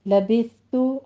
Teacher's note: لبثت میں سا کے اوپر سیٹی کی آواز نہیں لانی ہے، لبثت ہمس ہوگا صرف۔